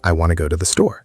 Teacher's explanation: want to becomes wanna because those words are unstressed and they blend together.